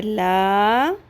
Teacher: نون زبرنا هم المفسدون واو زبر وا لام کھڑی زبر لا، مد اصلی ہے، ایک الف کے برابر